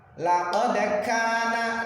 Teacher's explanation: Kaf ini adalah huruf hamas seperti huruf ta, bisa disebut ka.